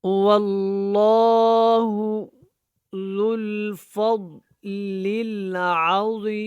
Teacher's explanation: لام جو ہے اللہ والا ہے، یہ موٹا ہے. زال جو ہے ہم نے اس کو لام کے ساتھ جوائن کرنا.